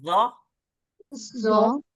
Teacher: जबान की नोक और ऊपर के सामने के दो दांतों के किनारे से ज अदा होता है। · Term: जाल